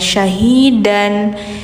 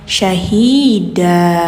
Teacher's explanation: Jadi bacanya suara n diganti ke panjang. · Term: mad iwad